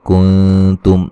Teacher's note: नून साकिन का बारीक इख्फा है, यहाँ मीम साकिन का इज़हार है।